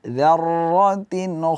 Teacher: Jangan kita baca dzarra, akan tetapi kita tahan sedikit aliran suara supaya tidak berlebihan getaran di huruf ra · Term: ra tasydid